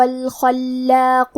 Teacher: کلمت الخلاق میں حرف الخاء کو تفخیم سے پڑھیں گے. لام پہ تشدید ہے لہذا ہمیں 2 حرف کے برابر لام کو پڑھنا ہے.